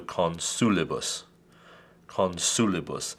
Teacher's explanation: Therefore, the accent goes on the antepenultima, the third from the end.